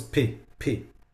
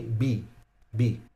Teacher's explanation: The ba is one of the shadid letters, strong letters. There is no whisper to it.